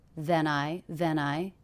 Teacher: he connected this ending consonant to the beginning vowel the diphthong I